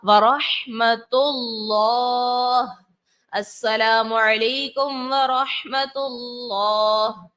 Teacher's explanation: اللہ تبارک و تعالیٰ کے نام سے پہلے پیش ہے، اور جب پیش ہو تو ہم اس کو پر پڑھتے ہیں. تو پڑھا ورحمۃ اللہ، السلام علیکم ورحمۃ اللہ.